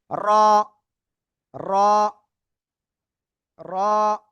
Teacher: জিহ্বার আগার পিঠ তারপর আবার উপরে তালুর সাথে লাগিয়ে আমরা এই অক্ষরটা উচ্চারণ করব।